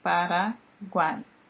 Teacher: Paraguai, da mesma forma, as três vogais permaneceram na mesma sílaba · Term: tritongo